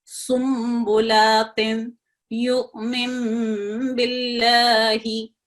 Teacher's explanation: नून साकिन की आवाज को मीम साकिन में बदल दिया जाता है। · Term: इखलाब